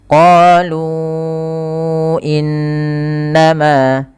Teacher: ini Alif yang di tengahnya lingkaran artinya alifnya dianggap tidak ada maka dia lu dua harakat ketemu Hamzah setelahnya maka dia menjadi empat harakat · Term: Mad Jaiz munfasil